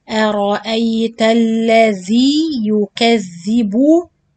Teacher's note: Araita, give it more contrast. The hamza light, the ra heavy, the hamza light. Araita alladhi yukathibu, the rounding of the lips with the ya and ba.